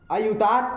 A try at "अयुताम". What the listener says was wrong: अयुतात बोला। अरे ताम होता है ना ऊपर का।